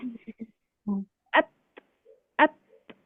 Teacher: huruf hams di sini hanya sebatas percikan napas saja. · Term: huruf ta